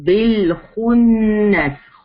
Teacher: خا ہیوی ہے، نون کے اوپر غنہ کریں گے